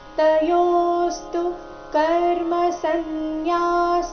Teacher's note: ತಯೋಸ್ತು ಯೋ ದೀರ್ಘ ಬಂದು ಸೌಮ್ಯ ಆಘಾತ ಮುಂದೆ ಸ್ತು ಸಂಯುಕ್ತ ಅಕ್ಷರ ಇದ್ದ ಕಾರಣ